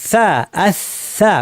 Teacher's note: সায়ের মাখরাজ কোথায়, জিহ্বার শীর্ষ থেকে একটু ভেতরের অংশ, তরাফুল লিসান, উপর পাটি দাঁতের শীর্ষে, এই জায়গায় লাগিয়ে সা বলা হয়।